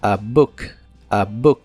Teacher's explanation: la palabra book se pronuncia con la u corta y explosiva